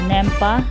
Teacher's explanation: it's called elision, because French doesn't like back-to-back vowel sound